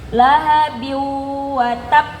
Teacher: Yang pertama ini ya, ini enggak masuk ke hidung. Lahabi watab saya panjangkan, tapi itu belum berdengung karena belum masuk ke hidung.